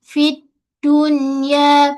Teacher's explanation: So pada fa ni satu harakat sahaja. Fi dia ada angin hams. Fi depan dia ada alif lam.